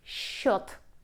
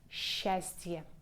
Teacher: The combination s, ch together in one word we pronounce like sh.